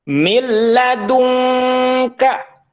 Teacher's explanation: mil tidak boleh panjang karena ini tanpa guna, namanya idgham bila guna. Nun mati bertemu dengan lam, ketika dibaca maka nunnya dihilangkan, langsung dimasukkan ke lam, seakan-akan lam ini bertasydid.